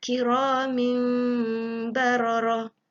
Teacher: kita baca dengan merapatkan bibir dan memberikan ruang dengung selama 2 harakat. Jangan ditekan, ditutup habis bibirnya. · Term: iqlab